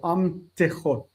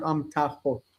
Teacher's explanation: drop of the vowel when you go into construct. So amtechot, not amtachot, because ta is a full vowel.